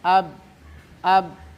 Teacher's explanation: ba tidak boleh keluar angin melainkan harus jelas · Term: jahr